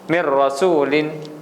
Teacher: seolah-olah tidak ada Nun tersebut